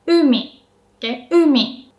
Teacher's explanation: You can kind of hear that u is pronounced with a high pitch. You don't put too much stress.